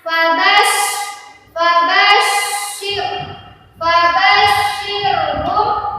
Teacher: ditahan huruf syanya karena syanya ada tasdidnya